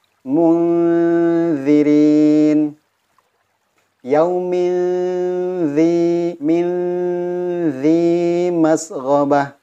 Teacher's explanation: ujung lidahnya diletakkan antara gigi seri atas dan gigi seri bawah, seperti tergigit.